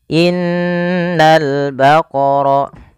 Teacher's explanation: Yaitu pada lafal ini suara nunnya ditahan, dan nun ketika dia berharakat tasydid kita hukumi dengan bacaan namanya gunnah. Cara membacanya, menahan dulu suara n-nya sepanjang 2 harakat baru dilepas.